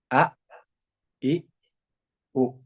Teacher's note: makhraj dari hamzah ada di pangkal tenggorokan